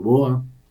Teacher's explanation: los bogotanos actuales no pronunciamos ciertas consonantes intervocálicas